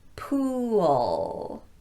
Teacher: my lips are going to protrude a lot because this is that long ooh sound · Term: long oo sound